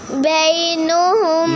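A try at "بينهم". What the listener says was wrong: نون پر زبر نہیں ہے، پیش آپ نے پڑھ دی، زبر ہے.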